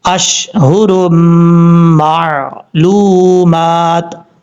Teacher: یہاں پر دو پیش کی تنوین ہے اور تنوین کے بعد میم آ رہا ہے حروف جر ملون میں سے، یہاں پہ ادغامی جر ملون ہو رہا ہے، ایک الف کی مقدار غنہ کر کے پڑھیں گے، اشہر معلومات، اس طریقے سے پڑھنا ہے۔